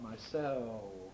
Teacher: it's losing the alveolar components of dark l